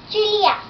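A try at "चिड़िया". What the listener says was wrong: Chidia. It's not Chilia, it's Chidia.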